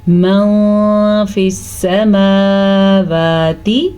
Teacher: من فی السماوات، اب دیکھیں پھر سے نون ساکن کے بعد فا آیا ہوا ہے جو کہ حروف اخفا میں سے ہے، اسی لیے ہم نون ساکن کی آواز کو چھپا کے پڑھیں گے اور غنے کے ساتھ پڑھیں گے · میم کے اوپر بھی کھڑی زبر ہے اور واو کے اوپر بھی کھڑی زبر ہے، تو دونوں کو کھینچ کے پڑھیں گے